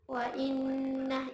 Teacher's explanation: Wa inna gunnah musyaddadah karena terdapat nun yang bertasydid. Cara bacanya digunnahkan dan ditahan kurang lebih 2 harokat